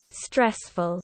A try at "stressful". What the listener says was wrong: stress, not stra, right? exaggerate it. smaller, flatter mouth.